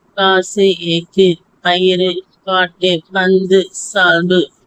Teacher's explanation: இவ்வாறு வல்லின உகரங்களும் சொல்லின் இறுதியில் வரும்பொழுது ஒரு மாத்திரைக்கு பதிலாக அரை மாத்திரை அளவே ஒலிக்கும். இவ்வாறு தனக்குரிய ஓசையில் குறைந்து ஒலிக்கும் உகரம் குற்றியலுகரம் ஆகும்.